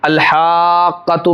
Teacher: जैसे आप देख लीजिए यहाँ पर अल-हाक़्क़तु में काफ के ऊपर भी सुकून है, तशदीद वाला हरफ 2 मरतबा पढ़ा जाता है, तो काफ यहाँ 2 हैं, एक काफ पहला साकिन है जिसको पिछले वाले हरफ यानी हा से मिलाया जाएगा, और दूसरा खुद काफ जिसके ऊपर ज़बर है तो काफ ज़बर का करके पढ़ा जाएगा।